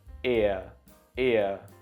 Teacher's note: And remember, they are 2 vowel sounds combined to make one sound. So this one is the I and the schwa together, and it makes the sound ear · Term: diphthongs